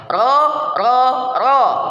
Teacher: posisi lidah merendah istifal dan infitah merendah posisi lidahnya